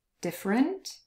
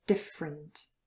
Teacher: there is a very short schwa sound between the f and the r but it could also disappear entirely